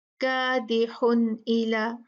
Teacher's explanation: हरूफ हलकी में से कोई भी हर्फ अगर नून साकिन और तनवीन के बाद आ जाता है तो वहां पर हम नून को साफ पढ़ देते हैं, क्लियर पढ़ देते हैं, लेकिन खींच के गुन्ना नहीं करते, बस उतना गुन्ना होगा जितना कि उसकी तबीयत में है, ठीक है। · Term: इजहार